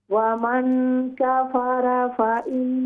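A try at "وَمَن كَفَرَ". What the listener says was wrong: را پر زبر، ومن کفر، را کو موٹا کریں.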